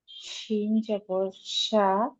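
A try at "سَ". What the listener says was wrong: হুম, এটা শিন না আপু, খেয়াল করেন। সিন জবর সা। সিনটা যেরকম উচ্চারণ করছেন একটা আওয়াজ আসছে না আপনার? এরকম আমার এরকম একটা আওয়াজ আসছে না, এরকম সায়ের মধ্যে আওয়াজটা আসবে, বুঝছেন জবর সা। সব জবর স।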